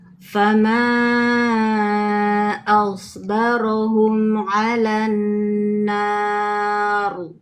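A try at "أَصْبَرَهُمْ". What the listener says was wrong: Ayo naikkan lagi huruf ro-nya. Fama asbaro. Ayo, ro.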